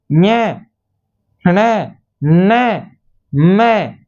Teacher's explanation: नासिका से हवा निकलती है इनके उच्चारण में